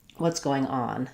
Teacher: in going on, it's a phrasal verb. So I'm going to be stressing on the on.